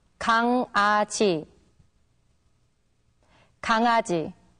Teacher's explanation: when the characters iung and iung meet back to back, then they are pronounced separately.